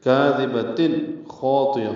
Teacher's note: تن میں اظہار ہے، تنوین کے بعد خا آنے کی وجہ سے